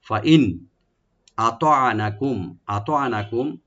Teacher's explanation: ফা ওপেন রাখবেন, হামজাকে রাইট দিয়ে, নুন সাকিন এখানে আমরা জাহার করব। ফাইন আতানাকুম, আতানাকুম, হামজাটাকে রাইট দিবেন, তোয়াটাকে রাইট দিবেন, আইনটাকে রাইট দিবেন।